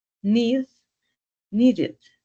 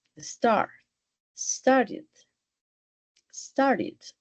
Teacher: no es una e redonda cierto es un sonido más similar a una i pero realmente no es una i con toda la propiedad sino que termina en un sonido más